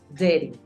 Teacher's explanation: Lo que pasa con dirty es un matiz que hace la R también en las vocales.